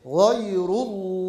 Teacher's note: lafzatullah'ın lamı kalın teşdit bila hunne meddi Arız deriz